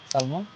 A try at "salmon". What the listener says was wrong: Unfortunately এখানে এলটা silent letter, পড়তে হবে সাম।